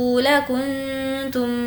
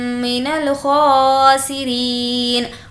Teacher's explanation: فضل اللہ علیکم ورحمتہ لکنتم, یہاں پر اخفا ہوگا, نون ساکن کے بعد تا ہے, میم ساکن کے بعد میم ہے تو ہوگا ادغام شفوی, غنہ کریں گے.